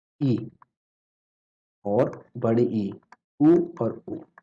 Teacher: यहाँ पे समृत में मुख जो है लगभग बंद रहता है। तो मुख लगभग बंद।